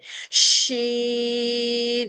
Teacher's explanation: اس میں صرف سی باریکی کے ساتھ ادا کرنا ہے اور اس کو وسل کے ساتھ پڑھا جاتا ہے۔ شین، مڈل آف دی ٹنگ جو ہماری وسط لسان ہے اوپر تالو کے ساتھ چپکتی ہے اور شی کے ساؤنڈ نکلتا ہے، یہ شور کے ساتھ باہر نکلتا ہے۔